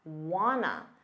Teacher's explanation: Want to becomes wanna in fast speech.